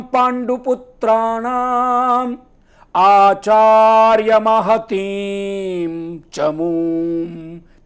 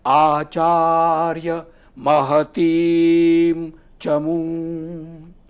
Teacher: ती दीर्घ है तो दीर्घ को आप स्वर को खींच सकते हैं।